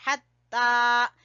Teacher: ہا کو وسطی حلق سے، گلے کے درمیان سے، اور تا کے اوپر کھڑی زبر ہے، اس لیے کھینچیں گے حتی.